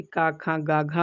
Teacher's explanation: कंठ से का, खा, गा, घा होता है